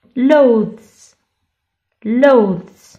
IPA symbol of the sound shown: z